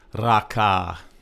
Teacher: It's a two-syllable word. Both syllables are flat tone. That means your normal voice.